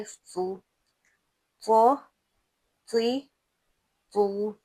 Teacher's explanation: त जिसको हमने भारी भरकम मोटा पढ़ना है